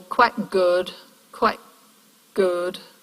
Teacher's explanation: So the T is not articulated, but has turned into either a K or a glottal stop.